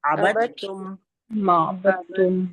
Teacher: لفظ عبدتم میں دال کی آواز نہیں آئے گی